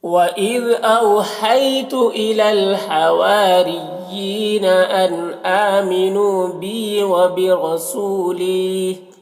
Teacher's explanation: سو میں واو مدہ ہے اور لی میں یا مدہ ہے، دونوں کو ایک الف کے برابر کھینچ کر پڑھیں گے